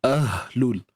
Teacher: Ha simpul juga kita pastikan sebutannya berada di pangkal kerongkong, pada pangkal kerongkong kita.